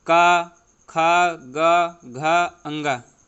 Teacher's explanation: ये सभी जो है ये का वर्ग के कंठ से बोले जाते हैं